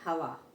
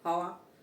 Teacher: जैसे हवा, हब्बा, हब्बा बोलेंगे तो गलत हो जाएगा, क्या होगा, पेट नहीं चिरेगा, गलत है, हवा, ठीक है, होठ हमारे टच नहीं हुए आपस में